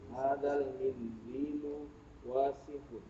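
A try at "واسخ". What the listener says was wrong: Pendek. Wasihun.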